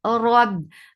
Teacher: lift your tongue up nicely to make ra heavy